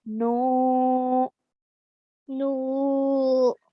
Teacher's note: Noon with a dhamma, followed by a waw sakin. So that makes it a waw madda. So we have to stretch for 2 counts.